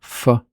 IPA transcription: f